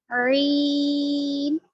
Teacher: عین گلے کے بیچ والے حصے سے ادا ہوگا